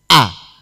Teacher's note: Hamzah ini munculnya dari tenggorokan yang paling bawah